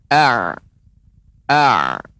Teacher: a akan terasa di tengah tenggorokan. A, ya, atau kita tasydidkan. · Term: huruf ain